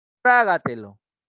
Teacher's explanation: La palabra trágatelo, tra es la que lleva la mayor intensidad y se ubica en el antepenúltimo lugar, por ende va a llevar tilde, trágatelo.